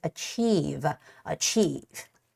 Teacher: the stress goes on the i and e part